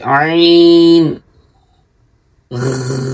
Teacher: عین حلق کے درمیان سے